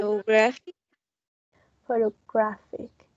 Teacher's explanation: We have one that's the primary stress in the third syllable